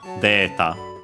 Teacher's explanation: accented just like in English, luckily on the de